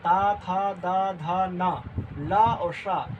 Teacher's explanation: री ता तू से तवर्ग, तो री ता था दा धा ना, ला और शा, इसका उच्चारण स्थान क्या है, दंत से, दंत माने दांत, दांत से उच्चारण स्थान